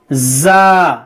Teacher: زا دیکھیے اس میں ہمیں سختی کرنی ہے, جیسا کہ ہم اوپر بتا چکے ہیں زا سین صاد یہ تین حروف میں سیٹی ہونی چاہیے, سیٹی کی طرح آواز ہونی چاہیے